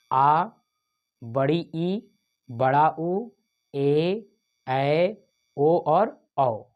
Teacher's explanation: दीर्घ स्वर हम उनको कहेंगे जिसमें ह्रस्व से दोगुना समय लगता है, या यूँ कहें कि इनके उच्चारण में 2 मात्रा का समय लगेगा, उसे हम दीर्घ स्वर कहेंगे।